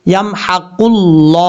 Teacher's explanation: लफ्ज़ अल्लाह को पुर पढ़ा जाएगा क्योंकि लफ्ज़ अल्लाह से पहले ऑफ के ऊपर पेश है, इसलिए इस लफ्ज़ को पुर पढ़ेंगे यानी फुल मौत पढ़ा जाएगा।